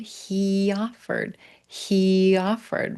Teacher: We'll grab that little y to connect into a vowel